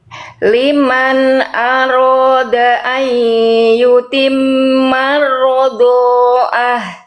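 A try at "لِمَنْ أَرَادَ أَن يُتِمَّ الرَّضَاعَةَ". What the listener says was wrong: Oke, ainnya mana ainnya? Rodoah. Ditekan lagi ainnya. Nanti kalau nggak ditekan jadi hamzah Bunda.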